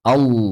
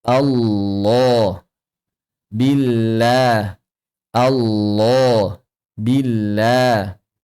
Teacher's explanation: lam mugadah ditebalkan dengan cara yang sama seperti huruf-huruf mufakhamah yaitu dengan cara membuat tengah lidah menjadi cekung. Kemudian pangkal lidahnya dinaikkan ke arah langit-langit dan juga adanya tekanan pada faring.